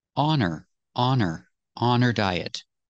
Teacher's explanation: the H is silent because the word her is not a stressed word